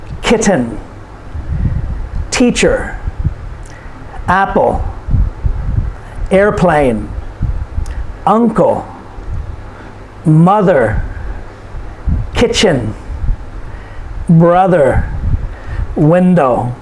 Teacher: these are two syllable nouns and the stress is put on the first syllable